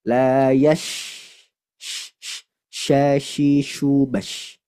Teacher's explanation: shin dia punya sifat tafashi, menyebar suara atau udara di makhrajnya, di mulut